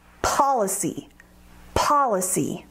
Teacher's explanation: Policy has three syllables, policy, with the emphasis on the first syllable.